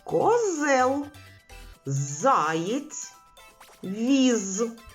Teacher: так спільний звук в цих словах твердий приголосний з